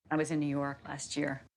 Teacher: she connects the words last and year. And not only do they sound like one word, but there's a ch sound that connects them.